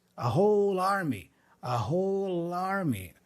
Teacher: we naturally join the L with the a for Army